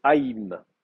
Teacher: Vous avez une diphtongue aï qui est maintenue. Et ça veut dire que le i que vous avez à la fin est une voyelle secondaire, une voyelle d'appui.